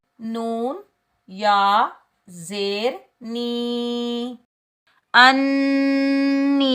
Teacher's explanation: یہ یائے مدہ ہے، اس کو ہم ایک الف کی مقدار کھینچ کر ادا کریں گے۔ حمزہ نون زبر، حمزہ نون زبر ان، نون یا زیر نی، انی، نون مشدد پر ہم غنہ کریں گے اور یہ یائے مدہ ہے، اس کو ہم ایک الف کی مقدار کھینچ کر ادا کریں گے۔